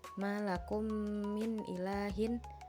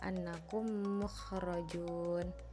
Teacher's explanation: mim sukun dimasukkan atau digabungkan ke mim harakat. Jadi, seolah-olah membacanya yaitu digabung atau dijadikan satu. · Pengertiannya yaitu apabila huruf mim sukun bertemu dengan mim harakat, maka bacaannya yaitu mim sukun dileburkan. atau dimasukkan ke dalam mim berharakat dan disertai dengan guna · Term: idgham mimi